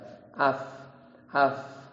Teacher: basah kan bibir bagian bawah ada yang kering ada yang basah Fa itu gigi seri atas bertemu dengan bibir bawah yang senantiasa basah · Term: huruf fa